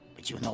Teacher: when a word ending in a t sound is followed by a word ending with a Y sound they often morph into a CH sound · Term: connected speech